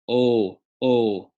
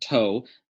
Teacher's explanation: there's no off glide so not like toe English word toe but as if you